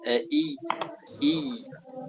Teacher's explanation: Tapi kalau kita bandingkan dengan ya yang makhrajnya wasatul lisan, maka terlihat perbedaan bahwa ketika mengucapkan ya yang makhrajnya tengah lidah itu nempel ke atas.